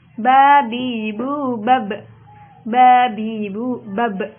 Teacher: apabila diucapkan hurufnya itu terjadi goncangan pada makhrajnya sehingga terdengar pantulan yang kuat. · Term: qalqalah